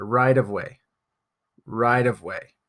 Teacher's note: instead of saying right of way we actually change the T pronunciation to a d so we'll say rideway it's kind of a very light T soft D sound right